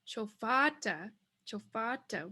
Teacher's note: So fa is going to be lengthened. So we'll change the A to a lengthened A.